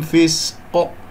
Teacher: وأقف على قاف مقلقلة قلقلة كبرى في آخر الكلام ساكنة · سين يجري فيها صوت والنفس صفير، كسر الفاء في فسق.